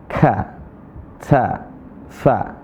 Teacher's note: Nah, perhatikan di sini ada huruf K sama ta. Nah, huruf K sama ta ada desisnya, ada napas yang mengalir.